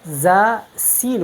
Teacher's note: और सीन और ज़ा ये भी इसी मखरज की हरूफ है, लेकिन इन हरूफ में इस्तिआला नहीं है तो हम इनको पुर नहीं पढ़ती, इसमें इनमें इस्तिफ़ाल और इन्फ़िताह है